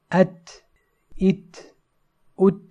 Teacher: the breath is slightly allowed to pass immediately after articulation, and there is no qalqalah, as in at, it, ut. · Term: hums